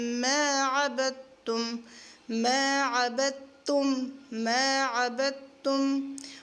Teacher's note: اس دال کو نہیں پڑھیں گے، تا کے ساتھ ملائیں گے